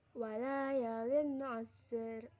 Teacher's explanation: Pada ayat kedua, walayalin asr, terdapat hukum bacaan izhar halqi karena kasroh tanwin bertemu dengan huruf ain dibaca jelas